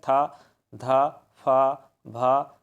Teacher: हवा बाहर की ओर ज्यादा निकल रहा है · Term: महाप्राण